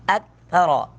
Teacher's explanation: تھا کو نرمی کے ساتھ ادا کریں گے، باریک پڑھیں گے، را کو پر کر کے پڑھیں گے